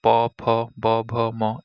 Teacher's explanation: প, ফ, ব, ভ, ম এগুলো বর্ণগুলো উচ্চারণের সময় আমাদের দুই ঠোঁটের মিলন ঘটে, তাই এগুলোকে ওষ্ঠবর্ণ বলা হয়।